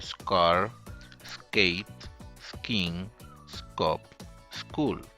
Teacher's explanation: Then we have the voiceless velar stop unaspirated like in scar, skate, skiing, scup, school.